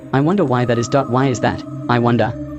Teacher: You can imagine them spoken with a downward inflection on the last syllable. With a question mark, they are questions, perhaps rhetorical, but you can imagine them being spoken with an upward inflection, as if inviting an answer.